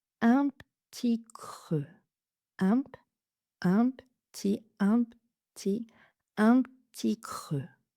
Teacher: Même chose que pour un petit peu, on va enlever le E de la première syllabe de petit.